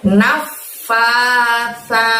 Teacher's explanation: Sa ada huruf sa di sana teman-teman. Ngucapin sa-nya ingat ujung lidah doronglah ke gigi atas kamu. Nafasa, saya tipis bukan nafasa, bukan ditarik kayak gini ya.